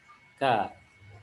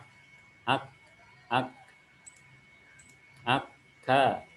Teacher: Pangkal lidah paling belakang pada posisi menempel ke langit-langit, hanya lebih ke depan sedikit daripada huruf qaf. Jadi huruf qaf ada di pangkal sini, kalau huruf kaf lebih maju.